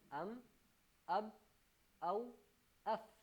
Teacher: ان کا مخرج ہے آپ کے ہونٹ، یعنی انسان کے ہونٹ ان چاروں حروف کا مخرج ہے